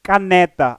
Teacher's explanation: consta do fim da palavra posto isso temos a palavra paroxítona paroxítona em que a sílaba tónica vai aparecer na penúltima